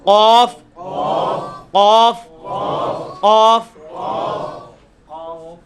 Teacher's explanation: ویسے تو یہ قاف جو ہے وہ آپ کی زبان کی جو تالو ہے نا پچھلی سائڈ والا, اس کو زبان کا جو اوپر والا حصے میں جو پچھلا حصہ ہے نا اس کو آپ اوپر تالو کے ساتھ ٹچ کریں گے, اسی حصے میں قاف نکل آئے گا